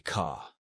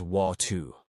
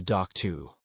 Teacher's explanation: in classic New York speech, the R disappears unless it's at the beginning of a word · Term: The dropped R